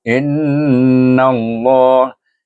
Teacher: Wajibul gunah pada in, nun bertasydid, wajibul gunah.